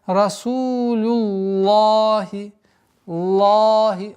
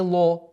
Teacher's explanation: лафзуль джаляля произносим лям в этом слове произносим твердо. И поэтому получается Расулюллахи, лахи, а не ло, звука о нет. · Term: лям произносится твердо